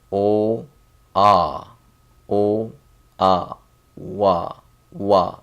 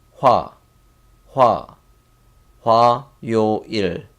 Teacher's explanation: So it's wa and just add a H sound. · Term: compound vowel